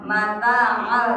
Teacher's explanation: Jadi fi idgham masuk, tekan 3 harakat tapi tidak boleh didengungkan ya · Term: idgham bila guna